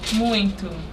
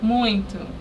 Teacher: She's not pronouncing the final O as O. I'm hearing a oo sound. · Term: final and unstressed O